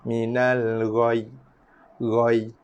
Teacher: bacaan tekanan ataupun bacaan yang memberatkan ya tu dikekalkan sebab bacaan sabdu syiddah tu tetap ada. Yang ditukarkan hanyalah bacaan baris bawahnya sahaja, tukarkan kepada baris sukun.